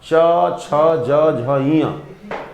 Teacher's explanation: चवर्ग का उच्चारण स्थान च, छ, ज, झ, ञ तालु से होता है।